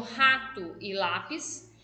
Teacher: sílaba tônica é a penúltima tá como rato e lápis